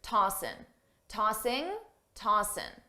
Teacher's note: a native speaker will drop the G sound on tossing, ing, and just say tossin', tossin'